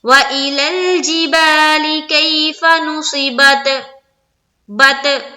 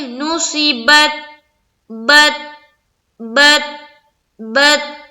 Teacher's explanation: وَإِلَى الْجِبَالِ كَيْفَ نُصِبَتْ بت اس طرح نہیں کرنا ہے. تا کے اوپر جو سکون ہے تو اس تا کے جو مخرج ہے اس پر ہماری آواز کیا ہوگی بالکل رک جائے گی ہے نا. ادھر ادھر آگے پیچھے کہیں بھی نہیں بھاگی نہ ہی ٹکرائے گی.